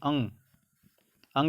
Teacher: अंग बोल के देखिए तो आपका आवाज सिर्फ नाक से निकलेगा